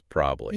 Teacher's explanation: The whole middle syllable just gets deleted because it's too much work for the lips. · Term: elision